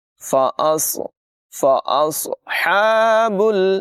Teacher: ہا کی آواز حلق کے درمیان والے حصے سے نکلے گی